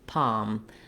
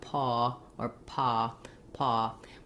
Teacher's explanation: some a little bit of rounding like paw or paw paw we really want to just have an open unrounded vowel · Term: ah vowel